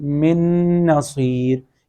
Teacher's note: اور نمبر 4 نون کی ایگزامپل من نصیر، یہ جو غنہ ہو رہا ہے یہ نون مشدد کی وجہ سے نہیں بلکہ ادغام کی وجہ سے، اس لیے کہ نون ساکن کے بعد اگلا حرف بھی نون ہے تو وہاں پہ ملایا بھی جائے گا اور غنہ بھی کیا جائے گا